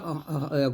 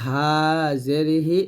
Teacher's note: হাটা আমরা গলার শুরু থেকে নরমাল ভাবে বলবো